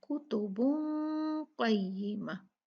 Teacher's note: कॉफ इख्फा letters में से है, तो हम यहाँ नून को इख्फा करेंगे, ना इजहार करेंगे ना इदगाम करेंगे कॉफ से, बल्कि नून को छुपा लेंगे।